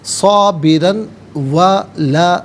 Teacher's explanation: اب یہاں پر آپ دیکھیں را پر 2 زبر کی تنوین، را کو پر کر کے پڑھا جائے گا، اور اسے 2 زبر کی تنوین کو واو کے ساتھ ملا کر واو کی آواز کو ادا کیا جائے گا۔ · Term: یرملون کا قاعدہ